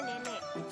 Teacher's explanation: bunyi E dengan ciri-ciri agak rendah, depan, tak bulat